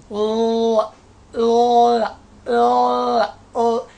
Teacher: air is allowed to escape around the side of the tongue. Air is allowed to escape along the side or to escape from around the side of the tongue.